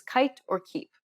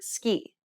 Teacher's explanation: notice how the k in the word ski does not produce a burst of air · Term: unaspirated sound